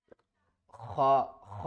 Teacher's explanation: خا کو حلق کے اوپر والے حصے سے ادا کرنا ہے ، اور جو آواز ہے خا، خا کی آواز آئے گی،